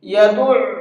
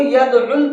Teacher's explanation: يَدُعُّ، اس لفظ کو بہت دھیان کے ساتھ میں سنیے گا، یہ عام طور پر بلکہ زیادہ تر لوگ اس کے اندر غلطی کرتے ہیں، اس کو یدعل پڑھتے ہیں، لیکن یہ یدعل نہیں ہے، عین کے اوپر تشدید ہے تو عین کو ڈبل پڑھیں گے